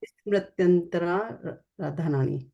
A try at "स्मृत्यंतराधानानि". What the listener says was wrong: स्मृत्यंतरा राधा नानी नहीं, डबल नहीं पढ़ना है। रा को एक ही बार पढ़ो स्मृत्यंतरा धानानी।